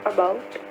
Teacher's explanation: The stress or the accent is on the second syllable